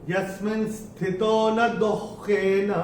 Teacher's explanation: और ये तीसरे चरण में ये जो शब्द हमको दिख रहा है दुख दुख, तो ये जो विसर्ग है, विसर्ग के बाद का अक्षर है ख, तो इसको विसर्ग का जो उच्चारण हम करेंगे वो हम करेंगे आधा ख